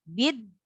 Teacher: Huruf nun di akhir ayat itu mempunyai sifat tawassut, ya. Tawassut itu sedikit mengalir. Jadi jangan langsung tertahan.